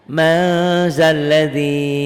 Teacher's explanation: N-nya tambah G disertai ditahan. Mandaladi ditulisnya man, dibacanya jadi mang, tapi agak ditahan. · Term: ikhfa